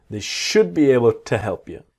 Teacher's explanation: And the to becomes ta.